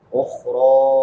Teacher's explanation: اخرى، خا پر پڑھی جائے گی، را بھی پر پڑھی جائے گی کیونکہ را کی پر زبر ہے، اور را پہ مد منفصل بھی ہے، حمزہ دوسرے کلمہ میں ہے. 3 الف کی مقدار کے برابر اس کو لمبا کریں گے